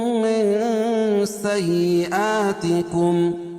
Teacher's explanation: نون ساکن کے بعد حروف اخفا کے 15 حرفوں میں سے سین ہے تو یہاں ناک میں آواز کو چھپا کر پڑھیں گے. من سیئا کھڑا زبر قائم مقام الف مدہ تکم. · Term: اخفا حقیقی